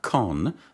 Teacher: begins with a velar consonant because the back of the tongue touches the soft palate